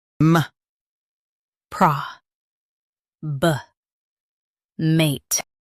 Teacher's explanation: Stress pro and soften bă.